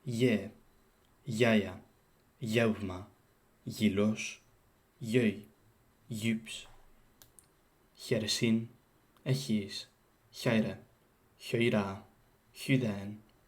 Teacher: before front vowels, as in e, I, u, they move forward into the palate, which is called palatalization